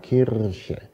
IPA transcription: ˈkʰirçə